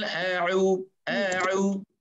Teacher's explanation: Hamzah berada di pangkal halqum, ain berada di tengah halqum.